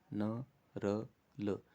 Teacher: इनके उच्चारण में जो जबान होती है वो ऊपर वाले तालु के मसूड़ों को टच करेगी, दांतों वाले मसूड़ों को टच करेगी। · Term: वर्त व्यंजन